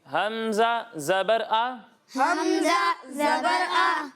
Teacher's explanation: اور جب ہم حمزہ کی ادائیگی کرتے ہیں تو اسے حلق کے نچلے حصے سے پڑھتے ہیں۔